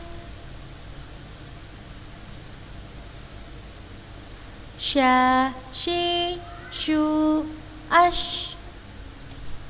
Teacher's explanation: huruf shin mempunyai sifat rokhlah. Mengalirnya suara pada tempat keluarnya, pada makhrajnya.